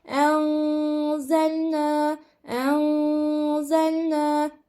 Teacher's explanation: nun sesini tutacağım yani genizden gunneli okuyarak burada 1,5 elif miktarı tutarak okuma gerçekleştireceğim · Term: ihfa